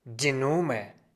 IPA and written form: diː ˈnʊmɐ (die Nummer)